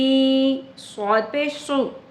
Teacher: स्वाद whistling sound के साथ ही होगा। It is same as द सीन is द difference is only कि हमने स्वाद को पुर पढ़ना है मोटा पढ़ना है।